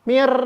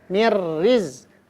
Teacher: Idgham bila gunnah masuk tanpa dengung. Hurufnya 2, lam dan ro.